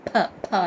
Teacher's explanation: ఇక్కడ సాంస్క్రిట్లో ఫ గాలి వదులుతూ ఫ పెదాలు మూసుకుపోయి గాలి బయటికి వెళ్ళాలి